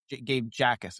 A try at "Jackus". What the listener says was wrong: I think the J is silent. I think it's Ackus.